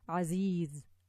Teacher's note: The Seen has air, whereas Zay doesn't. It just has that quality that there's like a buzzing, whistling sound.